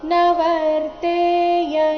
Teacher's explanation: ಯ ನಂತರ ಇರೋ ಅನುಸ್ವಾರದ ಉಚ್ಚಾರಣೆ ಚ ವರ್ಗದ ಅನುನಾಸಿಕ ಯ ರೀತಿ ಬರಬೇಕು